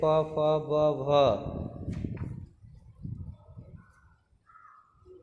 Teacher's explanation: ओष्ठ, इनका उच्चारण दोनों होठों की सहायता से होता है।